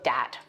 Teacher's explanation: th stopping so that might be using something like a d sound for where you see a written th